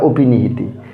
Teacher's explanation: এটা অয়ের উচ্চারণটা এখানে ও হয়ে যাবে, অর্থাৎ অয়ের সংবৃত উচ্চারণ